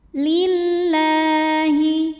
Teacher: Lam jalalah atau lam pada lafaz Allah dibunyikan secara tartik sebab huruf sebelumnya berbaris kasrah, maka cara bacanya ditipiskan, bunyinya la.